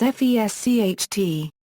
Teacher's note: As in other Alemannic dialects, the pronunciation of s before t and p is [ʃ]